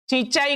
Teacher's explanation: जैसे हम गांव का उच्चारण करें या फिर ईंट का उच्चारण करें या फिर सिंचाई का उच्चारण करें तो हम देखेंगे कि कुछ ध्वनि जो है वह सिर्फ मुख से ना निकल कर के साथ में नाक से भी बाहर निकलती है। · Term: अनुनासिकता